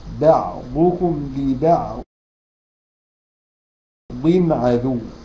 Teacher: والضاد مكسوره فتبقى اقل درجات التفخيم